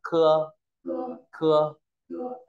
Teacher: C giống chữ khờ nhưng bật hơi nhá khưa cưa khưa cưa hát chữ khơ không bật hơi